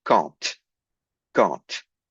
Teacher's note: The D here is pronounced as a T